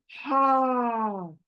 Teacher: तो वो वाला ह सीने से निकलेगा बाहर आएगा। कहीं से और से नहीं सीने से निकल कर बाहर आएगा। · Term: गोल हा